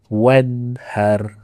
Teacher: Dia tekannya wan sepatutnya salah. Nun mati bertemu dengan ha. Kita tak boleh baca dengung.